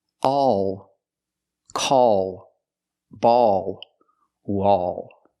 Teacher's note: and the L is a dark l so tense the tongue it's not a light L it's a dark L the tongue is tensed and raises up a little bit in the back